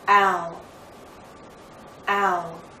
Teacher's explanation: It may help you to know that we're using a slight W sound, w, to make this glide possible.